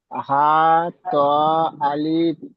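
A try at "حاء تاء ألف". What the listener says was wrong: আলিফে টান দেবেন না, আলিফ।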